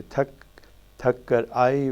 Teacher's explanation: And in both the phrases as shown, that the grid mark shows that between the two words it is the left word which is stressed. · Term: left dominant prominence pattern